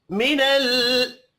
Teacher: लाम साकिन पर कलकला नहीं करेंगे।